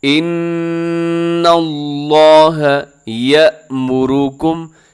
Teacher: لفظ اللہ کو اپنے موٹا پڑھنا ہے، اس کی وجہ یہ ہے کہ لفظ اللہ کے لام سے پہلے نون کے اوپر زبر ہے، لفظ اللہ پر پڑھا جائے گا، موٹا پڑھا جائے گا۔